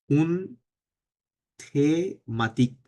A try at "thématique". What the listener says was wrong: না, থে না, ওটা এইচ তো উচ্চারণ হবে না, তেমাতিক,